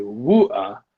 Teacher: and the T is dropped. So that's just a glottal stop.